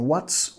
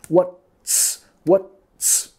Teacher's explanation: tenemos que pegar la T y la S